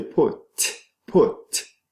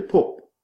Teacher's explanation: You kind of replace the t with the p because the p came before and affected the production of the t. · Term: progressive